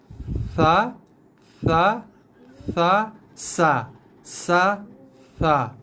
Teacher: Hujung lidah menyentuh belakang gigi bawah. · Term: bunyi sa